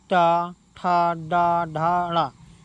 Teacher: टा वर्ग में हमारी जीभा क्या है, मूर्धन को स्पर्श करती है।